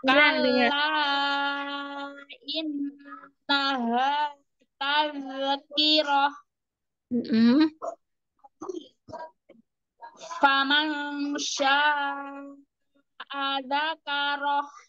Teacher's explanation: nun sukun bertemu syin ikfa hakiki samar-samar ada dengungnya.